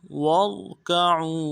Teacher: वाव को नरम से अदा करना है, रा को साथ मिलाना है, रा को मोटा करेंगे